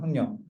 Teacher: 학년 같은 경우는 니은의 영향으로 기억이 이응된 거죠